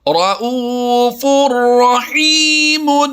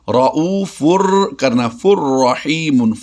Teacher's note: دو پیش کی تنوین کے بعد را دوسرے کلمے میں ہے تو ہم نے ادغام بلا غنہ کرتے ہوئے اس کی آواز دینی ہے